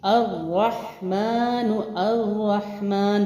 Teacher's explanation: الف اور لام سے جو حرف سٹارٹ ہوتا ہے، لفظ سٹارٹ ہوتا ہے، اس کے حمزہ پر ہمیشہ زبر لگا کے پڑھتے ہیں، ٹھیک ہے۔ الرحمن، الرحمن، 2 حروف کا ٹائم بھی دیا تشدید کی وجہ سے۔ صرف 1، صرف را، صرف 1، صرف را، ٹھیک ہے۔